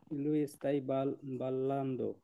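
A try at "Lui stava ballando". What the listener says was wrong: লুইস তাই না, লুইস তাবা।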